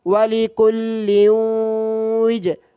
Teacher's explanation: لام پر دو زیر ہے تو غنہ کریں گے، یعنی ناک میں آواز چھپا کر پڑھیں گے